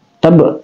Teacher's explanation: Ba itu kalkalah sugra, ya, kalkalah sugra, dia dipantulkan